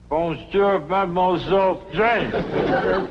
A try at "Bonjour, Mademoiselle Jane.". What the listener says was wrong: That's very good. Except for the mwah. Must be soft. Mwah. Watch my lips closely. Mwah.